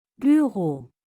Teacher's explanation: Similar to the OO in boot, but with rounded lips.